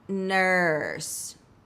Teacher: Focus on the uh sound and then add the R coloring.